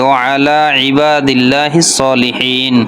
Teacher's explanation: হা গলার মধ্যে থেকে উচ্চারণ হবে